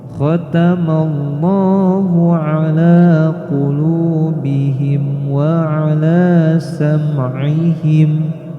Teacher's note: Huruf kha kita baca seolah-olah kita mau seperti mendahak. Maka jangan dibaca khatamallah tapi khatamallah.